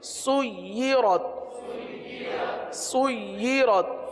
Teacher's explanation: या पर तशदीद है, लिहाजा या को रुक कर पढ़ेंगे